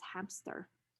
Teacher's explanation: a stop p is inserted between a nasal m and a voiceless alveolar fricative s